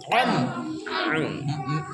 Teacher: मीम कहाँ से अदा होता है, दोनों होठ मिलकर मीम